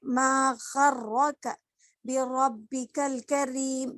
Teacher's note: تو را کے اوپر ایک تو تشدید آیا ہے، یعنی جس را کے اوپر تشدید رہا تو اس کو را مشددہ بھی بولیں گے ہم، اور را کے اوپر زبر ہے تو را کو ہم موٹا کر کے پڑھیں گے